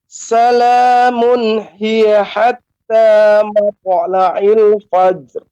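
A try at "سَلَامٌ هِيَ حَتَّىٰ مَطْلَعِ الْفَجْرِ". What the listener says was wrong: Untuk to ini pengucapannya tidak mato, akan tapi matu. Ya, kemudian fajar ini pengucapannya karena jim adalah huruf qalqalah, maka Bapak langsung ucapkan fajar.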